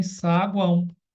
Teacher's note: saguão, que é nasal, né? Porque o som sai pelo nariz